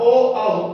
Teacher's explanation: कंठ और ओष्ठ के संयोग से बोले जाते हैं, इसलिए इनको कंठोष्ठ स्वर कहते हैं।